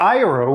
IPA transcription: ajɹow